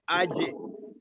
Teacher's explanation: अज ये माउथ की तरफ वाले हिस्से से लगता है। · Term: जीम